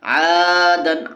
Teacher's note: کیونکہ الف سے پہلے عین کے اوپر زبر ہے اس لیے الف مدہ ہوگا، اور الف مدہ کو ایک الف کے برابر کھینچ کر پڑھیں گے